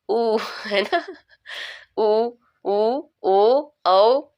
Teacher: देखिए बोलने में मुंह गोल बन रहा है ना